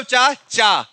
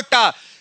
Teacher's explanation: जैसे आप चा बोलने के बाद टा बोलेंगे, तो जहां से आपने चा बोला था उसके थोड़े से पीछे आप आओगे।